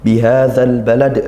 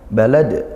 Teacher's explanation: balad juga dibaca qalqalah ya, mantul, qalqalah kubra